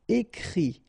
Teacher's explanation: Okay, and then the IT, phonetically you pronounce I because final T is not pronounced